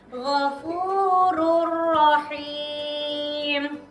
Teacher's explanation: jadi harus dibaca masuk tanpa mendengung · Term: idgham bilagunnah